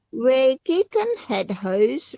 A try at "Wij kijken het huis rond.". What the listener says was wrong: Wij kijken, bukan kieken, wij kijken.